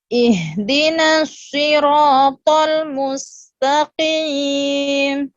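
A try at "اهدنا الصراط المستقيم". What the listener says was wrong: Jadi bukan mustaqim ya, tapi mustaqi biasa mustaqim mustaqi qi qi qi. Jadi sama seperti huruf biasa ya, si Jadi bukan mustaqi. Jadi enggak terlalu ini, enggak terlalu tebal. Qaf ini kan kasrah. Karena dia kasrah. Mustaqi sama seperti si, langsung disebut si qi langsung. Jadi bukan di mustaqim, enggak diancang-ancang, tidak diancang-ancang. Jadi bukan mustaqim, enggak, langsung mustaqi qi langsung.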